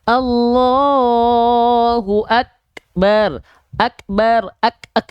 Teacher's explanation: percikan nafas biasanya dia tertahan dulu ya, baru keluar percikannya. Syiddah dulu, ak dulu baru keluar percikannya.